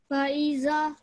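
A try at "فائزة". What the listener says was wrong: No, it's 2 seconds because it's fatha and followed by alif madda. Faiza.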